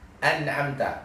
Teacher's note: ada guna dulu yang keluar dari hidung kita walaupun presentasinya sangat sedikit